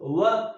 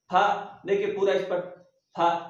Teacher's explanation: होठ स्पर्श तो हो रहे हैं लेकिन बहुत ही ईषत स्पर्श हो रहे हैं, थोड़े से स्पर्श हो रहे हैं। व, देखिए व, फ, व, फ, व, फ में देखिए पूरा स्पर्श हो रहा है, फ देखिए पूरा स्पर्श, फ।